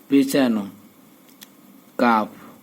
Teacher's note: জিহ্বার গোড়া থেকে একটু আগে বাড়িয়া তার বরাবর উপরের তালুর সঙ্গে লাগাইয়া